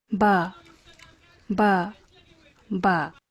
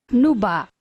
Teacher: And if you listen closely, you can hear an initial nasal there. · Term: pre-nasalized stop